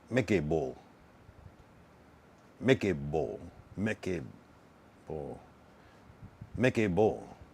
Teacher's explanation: It goes up. It goes down and ends sharp.